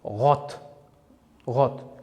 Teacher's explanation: ko'rib turganingizdek bunda r harfi soʻz boshida va unli harfdan oldin kelganligi uchun g' kabi